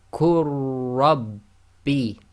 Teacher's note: Joining the qaf directly to the ra, the lam is completely ignored.